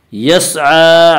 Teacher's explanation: عین کے اوپر کھڑا زبر ہے، کھڑا زبر کو ایک الف کے برابر کھینچ کر پڑھیں گے